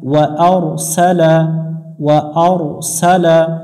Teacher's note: রয়ের উপর সাকিন ডান পাশে জবর হলে মোটা করে পড়তে হবে।